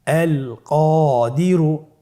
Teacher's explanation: কফের পরে আলিফ হরফটি এসেছে, তাহলে আলিফ হরফটিকে মোটা করে পড়তে হবে।